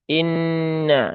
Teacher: maka pastikan bunyinya i, bukan e ya, bukan e, tapi i. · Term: kasroh